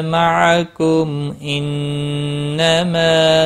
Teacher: معکم کسی بھی حرکت والے حرف کو کھینچنا نہیں، میم ساکن کے بعد حمزہ آیا ہے، اظہار شفی ہوگا